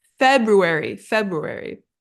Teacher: it's a very subtle R sound but it is there and it comes right after the B